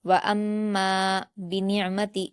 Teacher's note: मीम मुशद्द है। हमजा को मीम से मिलाकर पढ़ेंगे। गुना के साथ मीम पर अलिफ मदद्दा है। दो हरकात खींचेंगे।